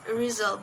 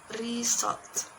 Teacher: Many learners make deviations when they're producing these sounds. They tend to replace sound Z with sound S as in the word result. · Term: voice alveolar fricative